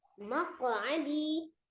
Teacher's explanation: qaf sukun, qalqalah ya, dipantulkan termasuk huruf yang qalqalah